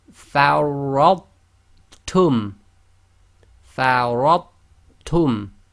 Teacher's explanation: So the ra has to join to the tha, so the tha is not actually ignored. However, you then seamlessly finish the sound of the ta with a ta. · We do not do the echo on the tha, i.e. we seamlessly join the sound of the tha to the ta.